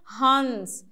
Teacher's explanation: थोड़ा सा नाक से आवाज आएगा और नो का उच्चारण होगा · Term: आधा नो